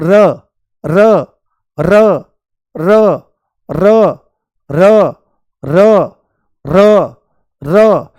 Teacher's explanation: बहुत हल्की सी टच होती है उसकी टिप पॉइंट, ऐसे आगे लगती है और लुढ़कती हुई सी मालूम होती है ना, मुंह में लुढ़कती हुई सी आगे मालूम होती है। और जब आप र बोलते हो तो ऐसे कंपन भी उठता है, र। · लुढ़कते हुए और सीधे ऊपर वाले मसूड़े में जाकर के ये लगती है